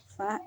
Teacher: Go dikeluarkan dari pangkal tenggorokan diucapkan dengan nafas tidak mengalir dari suara menebal. Fa dikeluarkan dengan menyentuh dua gigi seri atas dengan bibir bawah bagian dalam suara dan angin keluar dengan lembut